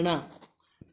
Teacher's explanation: तालव्य नहीं है, मूर्धन्य है